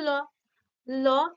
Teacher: উচ্চারণের সময় শ্বাসবায়ু যেটা নির্গত হয় জীভের দুই পাশ দিয়ে বেরিয়ে আসে দেখো একটু জীভের আগাটা উপরে ঠেকছে কিন্তু দুই পাশটা ফাঁক থাকছে · একটু জীভের আগাটা উপরে ঠেকছে কিন্তু দুই পাশটা ফাঁক থাকছে তাই না জীভের দুই সাইডটা ফাঁক থাকছে অর্থাৎ যে বায়ুটা নির্গত · দাঁতে গিয়ে স্পর্শ করছে তাই স্থান অনুযায়ী এটাকে দন্তধ্বনি বলা যাবে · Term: পার্শ্বিক